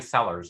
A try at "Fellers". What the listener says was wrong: Fellows with an F.